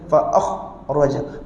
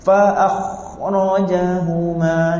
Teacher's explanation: angin kha tak boleh bunyi putus